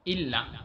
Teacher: کوم حرف چې شد لري لکه الا، تاسو وګورئ الا کې لام باندې شد دی نو امزه د لام سره وتړل شوله